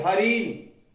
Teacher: देखो ई बड़ी आएगी तो थोड़ा जोर दे देते हैं ताकि वो दीर्घ बोल सके। ज्यादा जोर भी नहीं देना, नहीं तो वो प्लुत हो जाएगा।